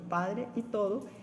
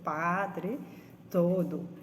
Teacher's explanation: la aspirada, la sonoridad, empieza algo más tarde, percibiéndose la explosión de un tenue soplo sordo